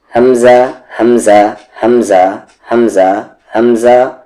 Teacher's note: حمزہ کی بھی آواز باٹم تھروٹ یعنی کہ نیچے والے حلق سے آتی ہے